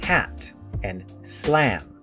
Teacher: A is very open and very front. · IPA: /æ/